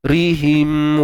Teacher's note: Ri nipis, ra baris bawah nipis